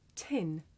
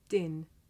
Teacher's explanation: the puff of air at the beginning of tin makes the paper move